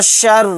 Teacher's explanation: را کو یہاں پر باریک پڑھیں گے کیونکہ را کے نیچے زیر ہے